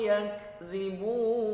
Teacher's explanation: Apabila disukunkan maka di situ adalah hukumnya hamz. Yakdzibun, mad arid disukun 2 sampai 4 harokat